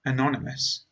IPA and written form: əˈnɒn.ɪ.məs (anonymous)